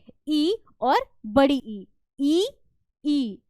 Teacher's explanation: जीव ऊपर जाने की कोशिश कर रही है दांत पे नहीं लगती है दांत से हल्का सा ऊपर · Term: तलव्य